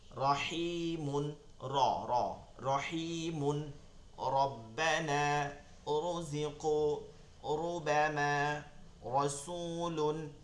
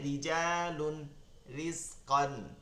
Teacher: র হরফে জবর পেশ হলে র হরফটা একটু মোটা করে উচ্চারণ করব, আর জের হলে বারিক করে উচ্চারণ করব